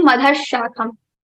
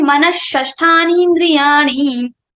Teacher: But we'll say Manashashthani indriyani, not Manaha, but Manash. So if after Visarga you have Sha, Sa, Sa, then the Visarga sound will be converted into the same sha.